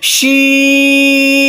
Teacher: 3 अलिफ के बराबर 4 अलिफ के बराबर खींच के बोलना है, शीन। इसी तरह से ये सौद, सौद, ज़ाद, ज़ाद।